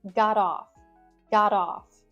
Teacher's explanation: the T at the end of got is more of a D sound